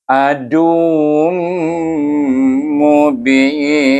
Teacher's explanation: dia dibaca dengan idgham ma'al gunnah kerana tanwin bertemu dengan huruf mim. Jadi bunyinya mubin.